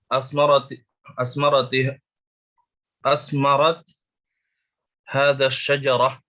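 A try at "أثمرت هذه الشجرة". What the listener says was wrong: Nah, hadhihi asy-syajarah. Asmarat hadhihi asy-syajarah. Afwan ya, ini ya, ini sukun ya, ini sukun bukan kasrah.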